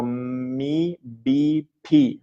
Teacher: all of these words start with a labial sound that means that you use your lips to pronounce it